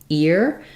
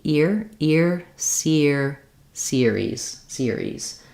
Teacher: It's not series because I'm not really doing a true E here as I do ear. When I'm doing ear, I'm starting from the position of the E, but I'm gliding right into the R, ear. So you want to think of it as being more like sear or sear. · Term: ear diphthong